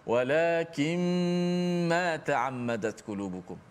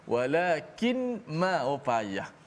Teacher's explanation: Walakin, asalnya nun mati. Walakin jumpa dengan mim, nun tu masuk dalam mim. Walakin, tutup mulut terus, senang. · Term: idgham ma'al ghunnah